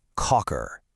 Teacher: When they make that k sound, it's often aspirated in English. It's not a hard k, it's a softer k sound, almost like a breath coming from the back of your throat.